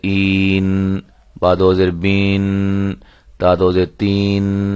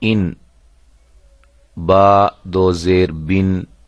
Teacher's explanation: اصل آواز کو بڑھایا نہ جائے، جیسے بن سے بین نہ بن جائے بلکہ بن ہی پڑھا جائے